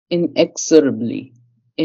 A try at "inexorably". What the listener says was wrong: Yes, that's it. You got it.